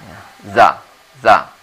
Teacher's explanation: Za-nya itu menyebutkannya dari lidah kita ini, kita letakkan di antara gigi atas dan gigi bawah.